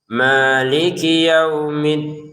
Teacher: ma 2 harokat saja, jangan maliki kepanjangan.